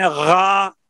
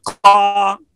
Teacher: गैन, खा और काफ जो तीन अर्फ है ना जिनमें एक दर्जा तफहीम है, उनमें जबान का दरमियान नीचे रहता है।